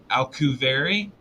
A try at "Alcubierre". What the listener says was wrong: Alcubierre. Yeah, it's with a B. Alcubierre.